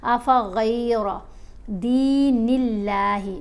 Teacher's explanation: اللہ کی لام کو باریک پڑھا جائے گا کیونکہ نون کے نیچے زیر آ گئی ہے۔